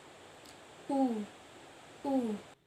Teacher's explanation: posisi lidah mundur ke belakang, bentuk mulut bundar, serta strukturnya tertutup